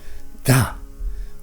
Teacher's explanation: the sound is correctly produced by placing the tip of the tongue against the backs of the upper row front teeth while simultaneously aspirating it with the breath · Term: dental Maha Prana